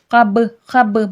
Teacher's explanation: با میں خلخلہ ہوگا، خلخلے کی صفات واضح ہوگی، یعنی کہ آواز پلٹ کر سنائی دے گی